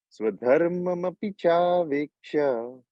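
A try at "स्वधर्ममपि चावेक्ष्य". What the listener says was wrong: Beautiful.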